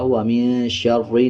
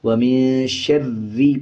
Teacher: جب شین کو را کے ساتھ ملانا ہے تو را کو پر نہیں پڑھنا بلکہ باریک پڑھا جائے گا، وَمِن شَرِّ نہیں بلکہ وَمِن شَرِّ پڑھا جائے گا۔